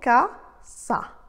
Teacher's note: L'accent tonique va donc porter sur l'avant-dernière syllabe.